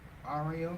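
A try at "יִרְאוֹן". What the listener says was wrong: You gotta make sure you're saying I when it's a I. There's an I and an The is another letter.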